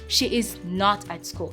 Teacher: not has a little bit more stress than the rest of the other words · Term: sentence stress